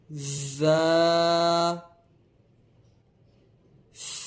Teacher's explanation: اس کو ادا کرتے وقت سیٹی کی طرح تیز آواز نکلتی ہے۔ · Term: حروف صفیریہ